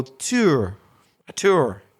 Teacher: Instead of saying tour, we do more or less use the oo sound, but we don't bother with the second part, the schwa. So we've kind of made it a monophthong in Belfast with just the first sound.